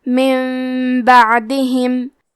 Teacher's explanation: قلب کا معنی ہے بدل دینا، تو ہم نون ساکن کو ہلکی میم میں بدل کے اور غنہ کے ساتھ یہ حکم کو ادا کریں گے